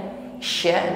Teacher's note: huruf shin ini sekalipun dia tafasyi, menyebar anginnya, sya, namun dia juga tetaplah huruf tipis